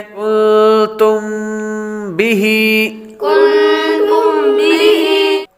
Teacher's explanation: میم ساکن کے بعد با آ رہا ہے تو اخفاء شفوی ہوگا، یعنی غنہ کریں گے